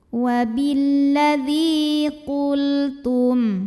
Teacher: Karena ada ya sukun yang didahului baris kasrah, maka cara bacanya zal yang berbaris kasrah kita panjangkan 2 harokat. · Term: mad tabi'i